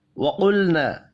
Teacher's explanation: قاف کو پر پڑھیں گے، الف مدہ کو ایک الف کے برابر کھینچ کر پڑھنا ہے۔